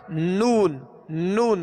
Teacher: मगर थोड़ी सी आवाज जो नाक की तरफ से लौट कर आ रही है। यह गुना है। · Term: गुना आनी